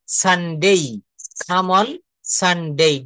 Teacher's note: ডে কে আমরা ডেই বলবো